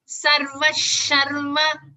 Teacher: After the visarga, we have a sha. So you have to stress on this sha.